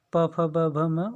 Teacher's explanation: प फ ब भ म ओठों का स्पर्श करते हैं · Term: प वर्ग